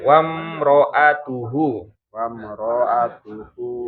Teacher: Wamroatuhu rnya tidak panjang